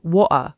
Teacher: casual London speech has its own variations too, including sometimes dropping the T sound almost completely in certain words, called a glottal stop.